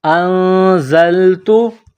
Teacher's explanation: حمزہ کو نون کے ساتھ ملانا ہے. نون ساکن کے بعد زا ہے. حروف اخفا ہے تو یہاں پر غنہ کریں گے. آواز ناک میں چھپائیں گے.